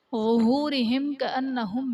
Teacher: میم ساکن کے بعد حرف با اور میم کے علاوہ کاف آ رہا ہے تو یہاں پر اظہار شفوی کا قاعدہ ہوگا، یعنی میم ساکن میں ہم غنہ نہیں کریں گے۔